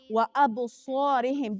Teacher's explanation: دلته اب کې بیا قلقلې صغرا کیږي یعنی وړه قلقله کیږي